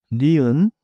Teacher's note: 혀를 윗니 뒤에 대세요. Second, 니은 is a nasal too. Tongue behind the top teeth. Air through the nose.